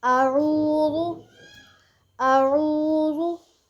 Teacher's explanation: عین جو ہے وہ مڈل پارٹ آف تھروٹ، حلق کے درمیان والے حصے سے ادا ہوگا